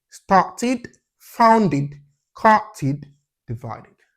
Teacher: You pronounce them, you pronounce the ED or the D by saying id.